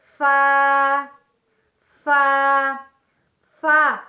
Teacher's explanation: اوپر والے 2 دانتوں کا سرہ اور نیچے کے ہونٹ کا اندرونی حصہ تو اس سے لفظ فا ادا ہوتا ہے، یعنی ثنایا علیہ کا سرہ یعنی اوپر کے 2 دانتوں کے سرے اور نیچے کے ہونٹ کا اندرونی حصہ تو اس سے لفظ فا فا فا ادا ہوتا ہے۔